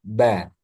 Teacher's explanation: ba syafatain kedua bibir. Bibir atas sama bibir bawah menyentuh dan sedikit ditekan ba. Jangan sampai ada udara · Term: huruf ba